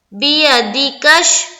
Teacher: کاف کو شین میں ملا دیں گے